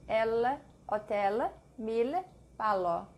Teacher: L, the tip of the tongue touching the roof of the mouth.